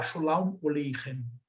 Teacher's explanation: Ele vai tender a transformar em O e U os As, né? Do hebraico